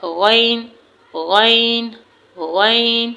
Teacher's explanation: यानी जबान की जबान की जड़ से पहले जबान का दरमियानी हिस्सा ऊपर के तालू से लगेगा ना तो फिर हरूफ गैन अदा होगा। · جب زبان کا درمیانی حصہ اوپر کے تالو سے لگے گا نا تو پھر حروف غین ادا ہوگا